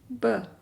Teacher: ब होठों को जोड़ने से और खोलने से।